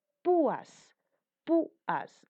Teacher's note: dos vocales, una cerrada más una abierta, pero la cerrada tiene mayor fuerza de voz, explosión de voz. Lleva tilde, además de ser una grave llana terminada en S.